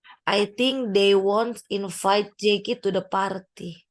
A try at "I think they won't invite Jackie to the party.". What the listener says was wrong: I think-nya jangan pakai G ya. Jadi pakai K. I think. K-nya. I think.